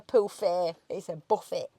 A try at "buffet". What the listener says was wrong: A buffet. Without the tea. Without the tea. Don't bother putting the tea, just a buffet. It's buffet. You sort of don't pronounce the tea. buffet. It's a buffet. Buffet. like cuts the tea.